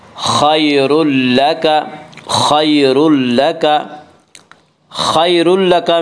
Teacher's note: یہاں تنوین کے بعد لام اور اس میں ادغام بلا غنہ ہوگا